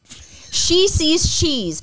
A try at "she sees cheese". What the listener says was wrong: Yeah, but the first time you didn't say cheese. You said she's again. You said she sees cheese, not she sees.